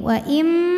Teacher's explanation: Wa im ada hukum idgham bil gunnah. Karena nun sukun menghadapi mim, maka nunnya lebur ke mim. Wa im sambil didengungkan, tahan bunyi m-nya.